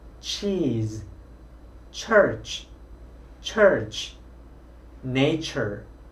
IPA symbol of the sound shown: tʃ